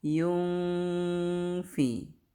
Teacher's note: kalau ini mah tanda gunahnya nun sukun bertemu fa. Maka harus gunah, ditahan juga di sini. Yungfi ditahan 3 ketukan.